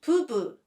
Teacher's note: second one as bu like be you so it becomes pubu did you notice the last word changed from p sound to b sound